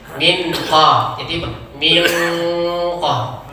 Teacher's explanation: Min, jadi nun antara nun dengan qaf itu bunyinya jadi ang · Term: ikhfa abad